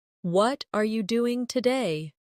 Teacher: the stress usually falls on what and doing